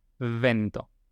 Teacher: Es apoyando los labios inferiores sobre los dientes. · Es como si fuera una F, pero haciendo vibrar las cuerdas vocales. Si no nos sale, lo podemos practicar haciendo una F y después, mientras hacemos la F, vibramos las cuerdas vocales.